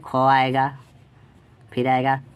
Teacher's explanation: ख आएगा, फिर आएगा छ आएगा। तो देखिए इसका KH होता है, H आ जाता है, ज़्यादा समय लगता है बोलने में, और CH के साथ साथ फिर एक ठो और H आ जाता है। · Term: महाप्राण वर्ण